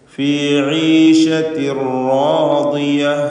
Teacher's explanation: ഈശത്തിൻ എന്ന പദത്തിലെ തൻവീനിന് ശേഷമുള്ള റായിൽ പൂർണ്ണമായും ലയിപ്പിക്കുന്നു. ഇദ്ഗാം ബി ഗൈരി ഗുന്ന.